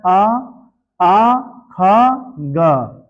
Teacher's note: अ आ ख ग इसका उच्चारण होता है कंठ से